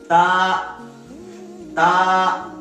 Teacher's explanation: مخرج ہے زبان کے سر اور دانت کی جڑ